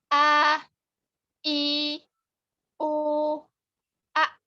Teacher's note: hamzah ini mempunyai sifat jahar, yaitu jelas.